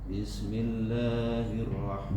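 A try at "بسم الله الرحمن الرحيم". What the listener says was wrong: Bis keluarkan desisnya. Sa-nya desisnya kecilkan lagi Pak. Kalau Bapak baca bis masih besar. Bis kecilkan. Bis. Gigi seri atas sama gigi seri bawah ketemu. Bis.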